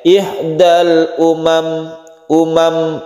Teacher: sukun mim ini hati-hati, di sini kadang-kadang dibaca panjang padahal ini adalah pendek. Ihdal umam, umam, pendek ya, bukan umam tapi umam.